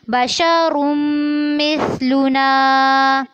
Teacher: را کو پر کرنا ہے اور میم کے ساتھ ملاتے ہوئے غنہ بھی کرنا ہے